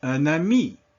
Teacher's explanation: I connect them, and then that makes that N pronounced. And so we simply just draw a line from one word to the next, indicating that there is a liaison.